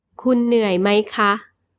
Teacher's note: The polite particle for female speakers ค่ะ with a high tone is used when you ask a question.